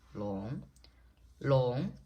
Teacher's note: long is the rising tone which is the second tone